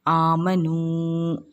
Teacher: میم پر زبر کی حرکت ہے، اس کو ہم جلدی پڑھیں گے۔ واو ساکن سے پہلے پیش ہے تو واو مدہ ہوگا، اس کو ہم ایک الف کی مقدار کھینچ کر پڑھیں گے۔ یہ الف خالی ہے، یہ پڑھنے میں نہیں آئے گا۔